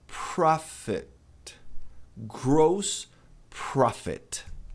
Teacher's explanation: Tem aquele puff de ar, né? Um leve A depois do O.